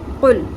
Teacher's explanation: قوف کو soft پیلٹ سے ادا کرنا ہے، یعنی کہ زبان کی جڑ اوپر نرم تالو کے ساتھ جا کے لگے گی، اور اس کو پر بھی پڑھنا ہے ہم نے، قوف، ٹھیک ہے۔